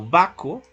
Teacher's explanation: Se simplificó, omitió esa vibrante.